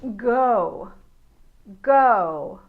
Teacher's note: I put my fingers to my vocal chords so that I can feel them vibrate, then I know I'm making the hard G sound.